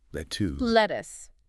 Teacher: the second vowel sound is a very short almost ooh sound like us